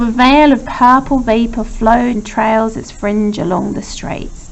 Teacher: we've got the V alliteration here of the veil of vapour, which is a kind of fricative sound